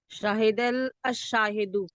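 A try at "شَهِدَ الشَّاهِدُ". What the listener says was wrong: लाम नहीं, शाहिद शाहिदू।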